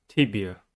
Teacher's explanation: Tibia has three syllables and the stress is at the first one. The first syllable is tip.